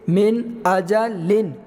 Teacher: اب نون ساکن کے بعد حروف حلقی میں سے آیا تو یہاں پر اظہار کا قاعدہ ہوگا اور غنہ نہیں کریں گے